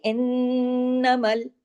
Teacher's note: نون پہ تشدید ہے، نون پہ غنہ ہوگا، ڈبل نون ہے نا